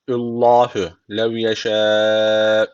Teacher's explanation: Allah lafzı burada kalın okunacak. Çünkü öncesindeki harfin harekesi üstte. Yani Allah lafzına üstten giriş yapılıyor.